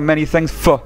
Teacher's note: ne se dira pas comme ça, for, mais comme il est entre deux mots, il est affaibli